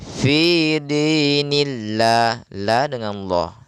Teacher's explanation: Seperti contohnya di ayat pertama Nasrullah dibaca Allah gitu ya kemudian ketika bertanda ya kasrah maka usahakan menjadi la tipis